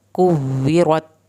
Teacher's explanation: इज़श-शम्सु, सीन को सीटी की आवाज़ के साथ पढ़ना है। कुव्विरत, वाव की शत पे देर लगेगी, रॉ को पुर करेंगे